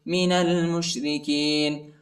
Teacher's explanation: نون کو لام کے ساتھ ملائیں گے، الف نہیں پڑھا جاتا، الف کے اوپر حرکت نہیں.